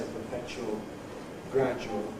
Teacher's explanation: most of the time I say [ pəˈpeʧuəl ], [ ˈgræʤuəl ] with the coalesced form